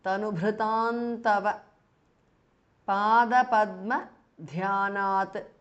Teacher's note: Now tanubhritam ends in an anuswara and tava begins with the tavarga, a letter of the tavarga. So the anuswara changes to n, which is the anunasika or the nasal of the tavarga. So it becomes tanubhritam tava pada padma dhyanat.